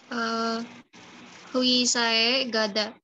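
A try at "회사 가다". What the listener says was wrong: Ini bukan hui tapi bacanya hue. Oh sama i dibacanya we. Jadi hue sae kata. Hue sae kayo.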